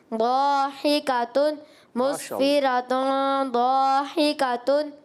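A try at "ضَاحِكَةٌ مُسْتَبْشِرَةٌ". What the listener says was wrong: غنہ نہیں کیا بالکل نہ ہونے جیسا غنہ ہوا غنہ کریں گے یہاں پر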